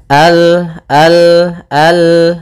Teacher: ujung lidah apa melekat dengan langit-langit atas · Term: makhraj daripada lam